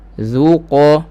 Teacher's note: Huruf zal, huruf istifal, nipis je lah.